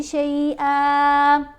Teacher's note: آپ اس کے اوپر وقف کریں تو ایک زبر پڑی جائے گی، ایک زبر خاموش ہو جائے گی